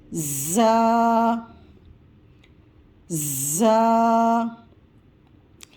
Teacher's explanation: را، را، پھر اس کے برابر میں زا، زا، زا کی ادائیگی کرتے وقت اسے سیٹی کی آواز نکالیں گے اور سختی سے پڑھیں گے۔ زا سختی والا حرف ہے، یعنی سامنے کے 2 دانت اور نیچے کے 2 دانت ان کو آپس میں ملائیں گے اور اسے سیٹی سختی سے پڑھیں گے۔